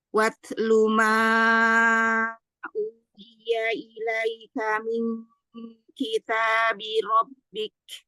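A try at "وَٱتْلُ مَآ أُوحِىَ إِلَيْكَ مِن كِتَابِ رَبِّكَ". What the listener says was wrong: Ya, mimatnya turun lagi suara matnya. Watlu ma uhiya.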